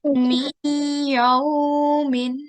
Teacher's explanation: So as I said before, we're going to be starting off with idgham naqis, and this is the first example over here, where there is noon sakin, which is in blue, and then R red, which is ya mushaddad, is the one where we do assimilation, which takes place with a 2-second nasal sound. So whilst we read this, remember that we need to do 2-second nasal sound, as that is the rule we are doing today.